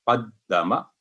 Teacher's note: दाल पर तशदीद वाले पर थोड़ी देर वक्फ होगा